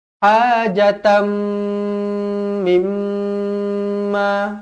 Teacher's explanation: ولا يجدون في صدورهم حاجة مما أوتوا ويؤثرون ولا يجدون في صدورهم حاجة tanwin tak selari bertemu dengan mim idgham ma'al gunnah, dengung 2 harakat. Kemudian mim yang bertanda sabdu wajibul gunnah pun sama juga dengung 2 harakat